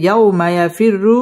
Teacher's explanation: ইয়াও জবরের বাম পাশে জজমওয়ালা ওয়াও, লিনের হরফ, তাড়াতাড়ি পড়তে হবে।